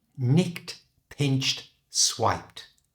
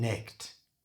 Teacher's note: Notice that all these words end in ed, but they're all pronounced t at the end.